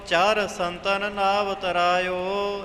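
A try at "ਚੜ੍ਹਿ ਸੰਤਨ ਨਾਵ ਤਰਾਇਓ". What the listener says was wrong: ਜਿਵੇਂ ਗਿਆਨੀ ਜੀ ਨੇ ਬੋਲਿਆ ਹੈ, ਭਾਰਾ ਕਰਕੇ ਚਰ ਨਹੀਂ ਬੋਲਣਾ, ਚੜ ਕੇ।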